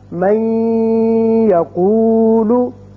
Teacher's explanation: ہم اس کو جب من کو یقولو کے ساتھ ملائیں گے تو ادغام کریں گے اور یہاں ایک الف کے برابر آواز ناک کے بانسے میں ٹھہرے گی